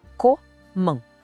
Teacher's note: A segunda parte é a nasal, man. Tudo junto, comment.